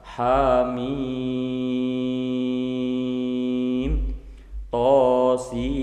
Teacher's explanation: Mad lazim harfi mukhaffaf atau dibalik mad lazim mukhaffaf harfi. Dibaca panjang 6 harokat.